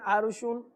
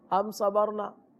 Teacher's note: را ساکن ہے اس سے پہلے زبر ہے، را کو پور پڑھیں گے۔